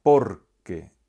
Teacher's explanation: la sílaba tónica es la primera de las dos de las que se compone la palabra